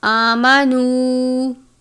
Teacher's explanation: کھڑی حرکات یعنی کھڑی زبر ہے، ایک الف کے جتنا اس کو لمبا کریں گے. نون واو پیش نو، واو ساکن سے پہلے پیش ہے، واو مدہ.